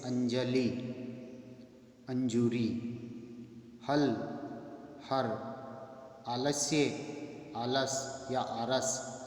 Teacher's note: मध्य या अंत में आने वाला ल, व्यंजन र में परिवर्तित हो जाता है